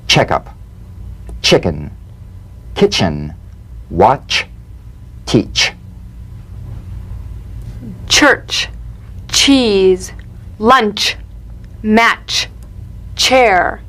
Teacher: sharp, crisp, percussive sensation between the tip of the tongue and the gum ridge. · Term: crisp staccato ch